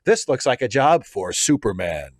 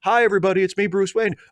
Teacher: he gets down lower for superman